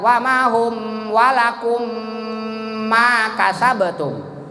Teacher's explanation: Mim mati ketemu mim hidup, idgham mislen sogir atau idgham mutamasilen. Dibacanya 2 harkat